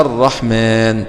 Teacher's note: وقع حرف الراء بعد اللام الساكنة، فحكمها الإدغام وجوبا، وهي لام شمسية لوقوع الراء بعد اللام الساكنة، والراء من الحروف المجموعة في أوائل هذا البيت.